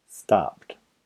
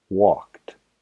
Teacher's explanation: P, k, s, ch, sh, f, x. No hay vibración en las cuerdas vocales con estos sonidos. Entonces se pronuncia el verbo con el sonido t en la terminación. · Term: sonido sordo